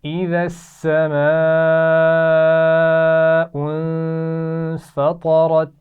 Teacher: اذا السماء بڑی مد ہے، کھینچ کر پڑھیں گے · غنہ کیا جائے گا. فطرت، طا اور را دونوں موٹی پڑھی جائیں گی